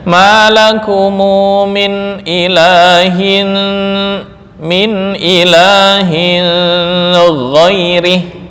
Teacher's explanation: Tanwin bertemu dengan gin menurut Abu Jafar dibaca dengan ikhfa. Jadi bacanya ma lakumu min ilahin min ilahin ghairih ya dibaca dengung ya.